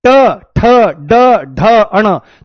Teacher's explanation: ये आपका मूर्धा से बोला जाता है